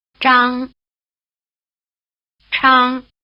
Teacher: Remember that they stand for consonant sounds with a strong R flavor, one unaspirated and one strongly aspirated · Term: retroflex